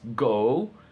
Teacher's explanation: mid to high back movement